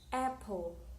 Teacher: in a word apple, the first syllable is the stress.